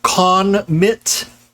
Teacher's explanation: produced by pushing by pressing your lips so what's happening in notice if you feel where your tongue touches for n it's touching on that ridge behind your teeth that's called the alveolar ridge and so this is called an alveolar consonant so what's happening